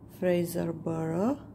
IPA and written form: ˈfreɪzərbərə (Fraserburgh)